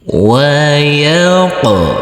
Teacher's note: Huruf qaf kita pantulkan karena ini adalah bacaan qalqalah huruf qaf yang bersukun ini. Dan huruf bod kita baca panjang dengan panjang 2 harokat.